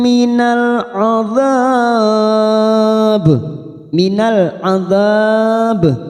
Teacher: tim minalab Minal adab lam takrif yang bersukun Idhar Qariah adab empat harakat kita panjangkan karena ada Mad yang bertemu dengan huruf hidup dan dibaca wakaf empat harakat kita panjangkan ujungnya kita pantulkan karena ada huruf ba